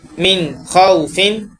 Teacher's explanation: اور غنے کے معنی ہوتے ہیں ناک میں آواز لے جانا، تو اس میں ہم لوگ ناک میں آواز بالکل بھی نہیں لے کر جائیں گے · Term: اظہار